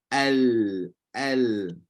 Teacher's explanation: hujung lidah kita sentuh dengan langit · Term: lam